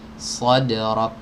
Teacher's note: Sifat hams pada huruf kaf ini bisa muncul jelas itu tatkala dia sukun ya.